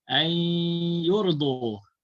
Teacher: Cara bacaan idgham ma'al gunnah iaitu bunyi nun dimasukkan ke dalam ya. Kemudian kita dengungkan dua harakat ma'al gunnah. Jadi bunyinya ay yurdu.